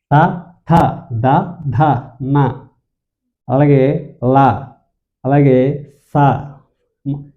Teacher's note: దంత అంటే దంతాల సహాయంతో పలికేవి. దంతాలతో అంటే నాలుక అనేది దంతాలను తగులుతాయి ఆ అక్షరాలు అనేవి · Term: దంత్యాలు